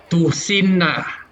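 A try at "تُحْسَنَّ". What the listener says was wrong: Bukan si, tapi sa.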